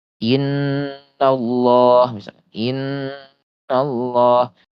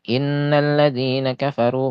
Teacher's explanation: huruf nun ini dia gunah musyaddadah ya, gunah yang paling ee kadar tekannya itu paling tinggi gitu ya. Yaitu ee gunah yang akmal istilahnya itu yang paling sempurna.